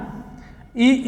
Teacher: इ ई यह बोला जाता है तालू से